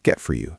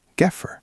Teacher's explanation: The t in get hits the f in four. The t disappears.